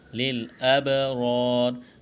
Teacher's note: با ساکن ہے، با پر قلقلہ کریں گے، را کے اوپر زبر ہے، موٹا کرنا ہے، الف مدہ ہے، ایک الف کے برابر کھینچنا ہے، یہاں جب وقف کریں گے تو را کو ساکن کریں گے۔